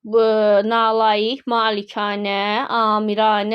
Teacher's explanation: Nalayiq, malikanə, amiranə sözlərində A-ların hər biri uzanır.